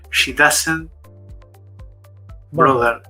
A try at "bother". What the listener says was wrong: Bother, not brother. Bother.